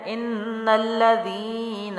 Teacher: ان الذین، اب یہاں پر نون مشدد ہے، ٹھیک ہے، حمزہ کو نون سے ملائیں گے تو یہاں پر غنہ لازم ہے۔ لام جو ہے تشدید والا سختی جماؤ سے، نون کو لام سے ملائیں گے اور لام کو زبر کے ساتھ بھی پڑھیں گے۔